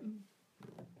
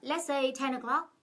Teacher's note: lên giọng ở cuối câu đối với cái câu cuối